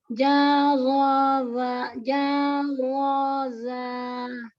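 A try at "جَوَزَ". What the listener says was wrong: Keseret ya Mi, huruf terakhirnya nurun dia. Nah, tuh kerasakan za gitu huruf terakhirnya. Naik dengan terseret beda ya Mi. Jadi zo itu kan keseret ya.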